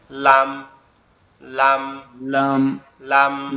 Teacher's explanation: সামনের উপরের দুই যে মাড়িটা আছে, সামনের উপরের মাড়ির সঙ্গে হালকা করে টাচ হবে, হয়ে উচ্চারিত হবে লাম · লাম যে অক্ষরটা আছে, এটা হচ্ছে আমাদের জিহ্বার আগা, উপরের তালুর সঙ্গে লাগবে, জিহ্বার আগাটা উপরের তালুর সঙ্গে লাগবে, লেগে উচ্চারিত হবে লাম